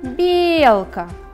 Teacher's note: Первый слог является ударным.